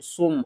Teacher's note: یہاں پر ہم نے صاد کو میم کے ساتھ ملانا ہے، میم مشدد ہے تو غنہ کریں گے، صاد میم پیش سم، اور صاد کو ہم نے موٹا کر کے پڑھنا ہے سم۔